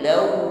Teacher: Yastaghfir lakum rasulullahi law waw tasydid ya, ditekan membacanya dan dihimpun bibir ke depan sesuai dengan makhrajnya